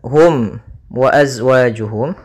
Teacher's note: maka ini kita namakan dengan hukum tajwid berupa izhar syafawi maka suara mimnya harus dibaca dengan jelas tidak boleh ditahan